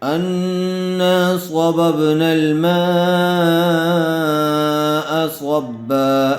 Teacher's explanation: حرف مدہ کے بعد اسی کلمے میں حمزہ آیا ہوا ہے، اس لیے مد متصل کا قاعدہ ہوگا، میم کو کھینچ کر پڑھیں گے۔